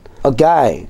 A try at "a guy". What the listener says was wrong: K 아니야, 알겠지? Guy야.